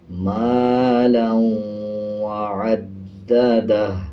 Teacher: اب جیسے واو کے اوپر شد ہے اور لام کے اوپر 2 زبر ہیں تو لام کو واو کے ساتھ ملاتے ہوئے غنہ کریں گے